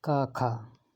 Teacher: का और खा, ये कंठ होते हैं।